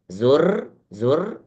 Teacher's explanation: ro yang tebal ro yang tidak terlalu terdengar getarannya